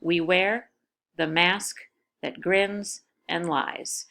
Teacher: the first syllable is unstressed the second syllable is stressed